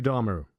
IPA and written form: ˈdɑːmər (Dahmer)